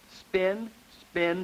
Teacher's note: there is a lenis, or light articulation, when we say the P in spin. Notice again, pin, lots of strength, but spin, spin, see how much lighter your lips come together on that.